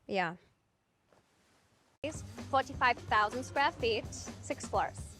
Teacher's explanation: American English yeah which uses the near low front vowel e She pronounces the word with the low front vowel uh to sound like ya which resembles a German English accent